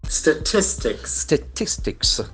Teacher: The accent falls on the second syllable.